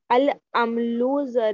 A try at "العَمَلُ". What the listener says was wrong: अमलू नहीं, मीम पे साकिन नहीं, मीम पे हरकत होगा, जबर होगा।